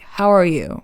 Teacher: in English, it could be a little flat at the end, like, how are you?